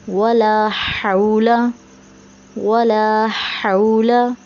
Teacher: वला में जो है लाम के बाद अलिफ आ रहा है, इसे एक अलिफ की मिक़दार खींच के पढ़ेंगे।